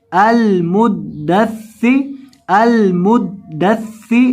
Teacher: دال اور سا دونوں کو مشدد پڑھنا ہے، سختی کے ساتھ پڑھنا ہے